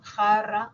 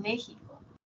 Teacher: tenemos la fricativa velar, que representa las letras J